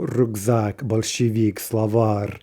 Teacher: Masculine nouns, more than one syllable. In the singular, they're stressed on the final syllable